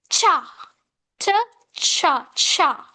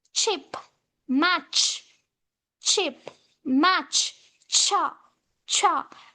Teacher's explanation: this plosive ta immediately is followed by friction sha, which means cha, ta, cha, cha. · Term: affricate